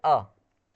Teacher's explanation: मूल स्वर भी है, ह्रस्व है, कंठ है और घोष ध्वनि है